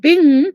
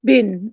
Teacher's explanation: in Old Turkic, we have bing with this velar nasal at the end of the word, but in Turkish, we have just a regular N at the end, bin, 1,000.